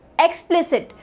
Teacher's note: So EX, the moderate one, then PLI, the primary sound, and CIT में I की जो sound है वो क्या रह रही है, वो काफ़ी ज़्यादा reduced है, मतलब उसको almost no के बराबर sound किया जा रहा है.